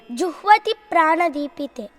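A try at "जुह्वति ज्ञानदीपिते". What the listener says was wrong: Juhvati jnana deepite. Jnana deepam, not prana deepam.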